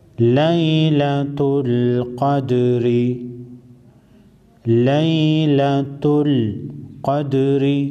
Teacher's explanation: قاف حروف مستعلیه کې راځي، پیړ به وایو، غټ به وایو، په ډکه خوله سره به وایو.